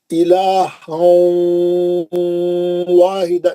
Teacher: पहली मिसाल पढ़ रहा हूँ, इलाहं वाहिदा, है ना, इलाहं, गोल मुंह करना वाव के लिए, मैं कैसा पढ़ बोला, वाव का मखरज क्या है, होठों को गोल करके मुंह से दूर ले आके पढ़ना, सही मखरज है वाव का। इलाहं वाहिदा, नाक में से आवाज आना, गुन्ना बोलते ही नाक में से आवाज आना, इलाहं वाहिदा, तनवीन का इदगाम माल गुन्ना हर्फ वाव।